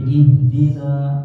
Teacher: ihdina itu kalau tidak digabungkan dengan as-sirata itu panjang. Jadi ihdina kayak gitu dua harokat.